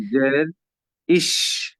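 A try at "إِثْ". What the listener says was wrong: না, জিভটাকে বের করতে হবে, আপনার জিভ বের হচ্ছে না, আমি নিশ্চিত 100% শিওর আপনার জিভটা মুখের ভেতরে আছে। জিভটাকে বের করতে হবে মাস্ট। ইস, সা, সা, জিভ বের করতে হবে, দাঁতের সামনে বের করতে হবে, আর বাতাস বের করতে হবে। ইস,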